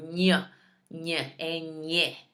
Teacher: you got to put your tongue on the roof of your mouth and almost make a nasal sound